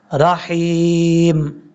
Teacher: جب وقف کریں گے تو میم ساکن ہو جائے گا